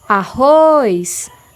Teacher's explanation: Quando eu chamo a palavra arroz, é possível perceber que a última sílaba, o ROS, Z na verdade, ela tem maior força e maior intensidade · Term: sílaba tônica